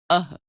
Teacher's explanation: विसर्ग अह, हिंदी वर्णमाला में इसे भी स्वर के साथ लिखा जाता है। विसर्ग का उच्चारण ह व्यंजन के रूप में किया जाता है।